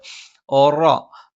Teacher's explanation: നാവിന്റെ തലയുടെ മുതുക് മേലെ മുൻപല്ലിന്റെ മോണയിലാണ്